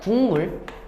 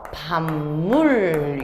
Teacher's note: 기억이 그 자리에 있는 비음이 됐고, 디귿이 그 자리에 니은, 비읍이 그 자리에 미음, 비음이 됐구나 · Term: 비음화